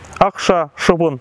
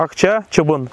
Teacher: Систематическое использование общеногайских «ш», «ахша», «шабын. В отличие от татарского «ахча», «чабын».